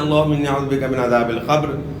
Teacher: اللہم کے لام کو آپ نے موٹا ادا کرنا ہے، کیونکہ یہاں اللہم کے لام سے پہلے والے حرف کے اوپر زبر ہے۔